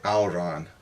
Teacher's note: most people will say auron, even though it's written with the fada on the A. They'll still say the diphthong ow.